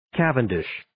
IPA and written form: 'kævəndɪʃ (Cavendish)